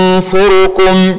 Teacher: لسانك يقترب من حرف الصاد. هكذا ينصركم، والغنة تكون مفخمة